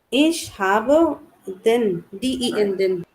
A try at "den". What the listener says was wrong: nein, that is den, not then. If you say then, I understand it as D-E double N. Yeah, it has to be long E, but I need a pronoun here.